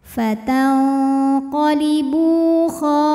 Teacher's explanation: ada wau sukun didahului damah maka ba panjang dua harakat